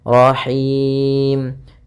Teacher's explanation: H kecil dari tengah tenggorokan kita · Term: ha kecil